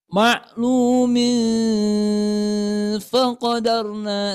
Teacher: suara tanwin atau huruf konsonan n-nya tidak dibaca jelas, tidak dibaca an, in, un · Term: ikhfa haqiqi